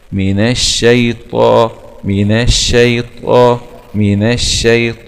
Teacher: ياء سكون حرف لين، من الشي، طاء فتحة طاء مع التفخيم، وهي الآن في أعلى درجات التفخيم لأنه من حروف الاستعلاء المجموعة في جملة خص ضغط انقض.